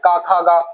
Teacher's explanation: इस क वर्ग का होता है कंठ। इनका उच्चारण कंठ से होता है।